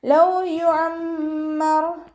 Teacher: റോ വമ്മയാണ്, വമ്മയായാലും നമ്മൾ ഉയർത്തിയിട്ട് ഉച്ചരിക്കാൻ ശ്രദ്ധിക്കുക